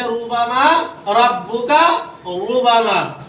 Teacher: اگر را کے اوپر زبر ہو یا پیش ہو تو را کو کیا پڑھیں گے؟ پور پڑھیں گے